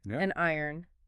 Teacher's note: It interrupts the natural rhythm. So by adding the N, saying an iron or an hour, that consonant acts as a bridge. >> So the breath just keeps flowing smoothly. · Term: phonetic bridges